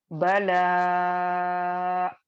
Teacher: بلا یعنی حمزہ کو تھوڑا لائٹ جھٹکا دے کر آپ کو سٹاپ کرنا ہے, کیونکہ آپ حمزہ ساکنہ کی تحقیق کو جانتے ہیں.